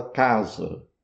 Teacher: o A da primeira sílaba é um A longo e forte, aberto, K. O segundo A, casa, Z, A.